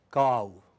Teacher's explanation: the movement is from central, open or close to open, unrounded, to back, half closed, rounded. It glides from this position to that position. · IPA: /kau/